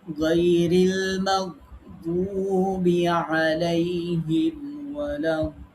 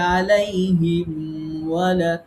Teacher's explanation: এটা হচ্ছে মিম সাকিনের বামে, মিম সাকিনের বামে ওয়াও এবং ফা, এই দুইটা অক্ষর যদি থাকে তাহলে মিম সাকিনকে খেয়াল করে স্পষ্ট করে পড়তে হবে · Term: ইজহারে খাস